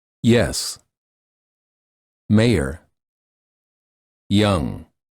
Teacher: the tip of the tongue touches the lower front teeth the front of the tongue is raised near the hard pallet